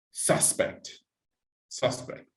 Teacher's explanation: if you see when you use suspect as a noun, the stress is at the beginning. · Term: word stress